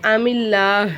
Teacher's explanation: அல்லா வார்த்தைக்கு முன்னாடி இருக்கக்கூடிய எழுத்துல ஜேர் வந்தனால நம்ம வந்து மெலினமா வச்சிருக்கணும்